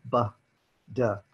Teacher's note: They're both called stop consonants, and they're called that because of the way we make the sounds. We make the sounds of both the B and the D by stopping the flow of air over our vocal cords and then releasing it suddenly. This is why they're called stop consonants.